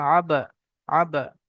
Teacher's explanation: বা উপরে সাকিন এসছে হরুফে কলকলা পাঁচটি অক্ষরের মধ্যে থেকে বা তাই একটু কলকলা করতে হবে